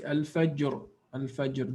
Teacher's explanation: There is a qalqala on jim and then ra is strong or full mouthed.